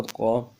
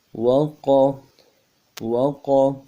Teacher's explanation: قاف زبر قا، قاف کو موٹا کرنا ہے، زبان کا بیچ بھی اٹھانا موٹا کرنے کے لیے، اور زبر منہ کی طرف کھلنا ہے۔ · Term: قاف موٹا